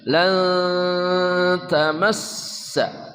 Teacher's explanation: nun mati bertemu ta namanya ikhfa haqiqi samar dan dengung